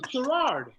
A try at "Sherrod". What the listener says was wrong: You throwing like 9 extra R's in there.